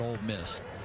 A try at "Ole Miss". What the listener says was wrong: Did you just say Old Miss? You said Old.